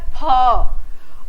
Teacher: रहे हैं तो मित्रों यह क्या होता है फ और इसमें नीचे का होठ ऊपर के दांत के बीच इनमें संघर्ष होता है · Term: संघर्षी व्यंजन